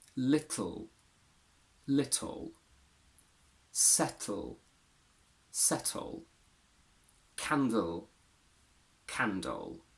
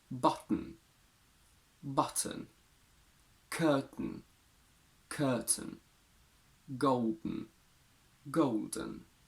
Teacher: these are considered syllabic consonants meaning that even on their own they create a syllable